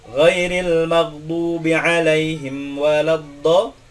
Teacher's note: Nah, tidak boleh kita ucapkan seperti itu karena alif pada lafaz waladdallin itu harus dibaca memanjang, melebihi aslinya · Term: bacaan mad